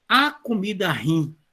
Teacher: Esse termo, a pronúncia correta dele é ruim e não ruim. Já tem outra região do Brasil em que você pega a palavra ruim e fala rim.